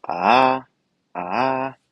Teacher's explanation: it's classified as low Rising but it has a little dip